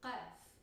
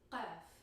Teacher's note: It's somewhere between a k sound and a g sound. It's like a calf, but very guttural, further down the throat.